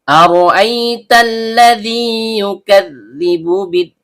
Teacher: Ro ujung lidah bertemu dengan langit-langit bagian belakang. Karena r-nya berharakat fathah maka hukum bacaannya tebal atau tabhim. · Lam ujung lidah bertemu dengan langit-langit bagian depan. Dzal ujung lidah bertemu dengan ujung gigi seri atas. Karena dalalnya berharakat kasrah diikuti ya sukun.